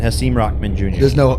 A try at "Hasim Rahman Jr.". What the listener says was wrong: There's no hard K.